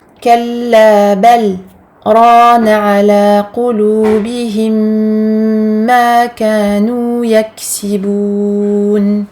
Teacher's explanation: un arrêt court sans reprise de respiration